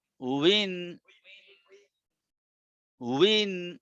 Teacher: আগে ঠোঁট গোল হয়ে ওয়াও হবে, তারপরে নিচের দিকে ঠোঁট ভাঙার পরে এটা জের হয়ে যাবে।